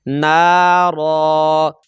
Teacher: دو زبر کی بجائے ہم ایک زبر پڑھ کر اس کو الف مدہ میں تبدیل کریں گے